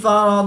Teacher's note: ضاد حروف مستعلیہ میں سے ہے تو ضاد کو پر یعنی موٹا پڑھیں گے